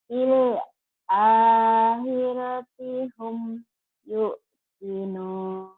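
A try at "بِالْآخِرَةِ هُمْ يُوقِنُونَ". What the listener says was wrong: Nah, yu-nya jangan diteken karena nggak ada hamzah. Itu matobi yu. Kalau yang diteken itu kalau di atas wawunya ada di atas wawu ini ada hamzah ya. Jadi jangan yuk tapi yu.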